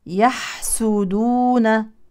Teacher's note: ضم السين السين مضمومه وليست مكسوره لا نقول يحسدون خطا طبعا الحاء الساكنه نبين فيها الهمس والرخاوه